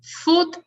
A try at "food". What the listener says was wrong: Food with more D, because it's too much T at the end. So food, and not food.